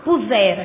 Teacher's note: o rá é átono, pronúncia mais baixinha